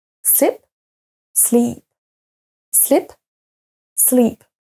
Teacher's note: slep et le deuxè sleep dormir donc vous voyez bien que si jamais vous prononcez pas le i suffisamment long on peut comprendre un autre mot